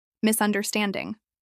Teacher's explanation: This is pronounced with four syllables and stress on stand.